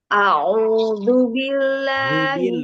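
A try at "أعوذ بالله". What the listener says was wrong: Belum dalalnya belum keluar tuh, Bu. Du, ujung lidah keluar sedikit.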